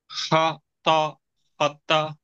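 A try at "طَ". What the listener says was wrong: ஹா என்று உச்சரிக்கிறது பிழையே. ஹாண்டா அது தடிப்பமே. தா அல்ல. தா அல்ல. தா அல்ல. துவா. ஹ துவா. ஹ துவா. ஹ துவா. ஹ துவா. தா தாண்டு வரக்கூடாது. தா என்கிறது பிழை. தா அல்ல. துவா. துவா. துவா. நேரடியாக வானத்தை நோக்கி தூக்குவோம். துவா.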